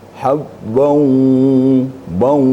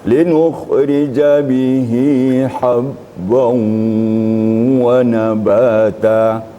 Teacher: Sekarang ketemu baris 2 atau fathatain ketemu dengan waw. Jadi harus kelihatan gunnahnya, sengaunya. Berarti hidung kita fungsikan secara maksimal. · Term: idgham ma'al gunnah